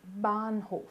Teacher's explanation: Então esse a com h ele é um pouco prolongado